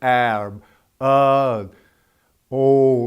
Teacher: you can feel the vibration going on in your throat. That's a voiced sound.